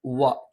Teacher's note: ചുണ്ട് വൃത്താകൃതിയിൽ വെച്ച് ഉച്ചരിക്കണം